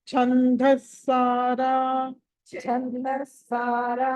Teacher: ఛందస్సారా ఛ అనేది మహాప్రాణం, సా కింద సావత్తు వచ్చింది కాబట్టి ఛందస్ సారా.